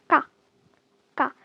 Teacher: double consonant, you have to say them with a lot of air